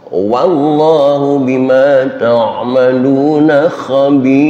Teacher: wau dipatah, dibaca wa bukan wo, maka di sini juga kita baca wallahu bukan wallahu.